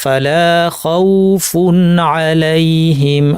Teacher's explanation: আমাকে না টেনে পড়তে হবে, এখানে টানার কোনো সুযোগ নাই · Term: লিনের ওয়াও